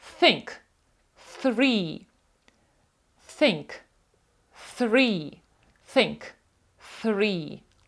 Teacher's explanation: під час вимови цього звуку наш язик ставиться між двома зубами